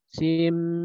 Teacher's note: cara pembacaannya, yaitu sin dengan mim, diidghamkan